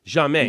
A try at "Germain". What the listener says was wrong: You have to roll the R. That's the